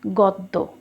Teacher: আদ্য অ এবং শেষে জফালা ব্যবহার করার কারণে দুই দিকে কিন্তু ওকার হয়েছে